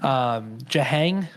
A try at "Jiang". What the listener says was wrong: Jiang, I feel like. Jiang. You threw an H in there.